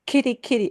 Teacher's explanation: the English te gets a puff of air